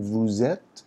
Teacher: Here you'll have the liaison, S to E, vowel sound, vous êtes, but this is silent.